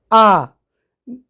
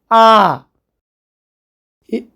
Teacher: বিবৃত স্বরধ্বনি, যে স্বরধ্বনি উচ্চারণের সময় মুখগহ্বরের আয়তন অপেক্ষাকৃত বেশি থাকে তাকে বিবৃত স্বরধ্বনি বলে। যেমন আ, আমরা যখন আ উচ্চারণ করব তখন একেবারে মুখ সম্পূর্ণটা কিন্তু খোলা থাকছে